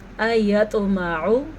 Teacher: طوا کے پر کلکلا ہو رہا ہے کیونکہ طوا پہ ساکن آ گیا ہے اور طوا حروف کلکلا میں شامل ہے.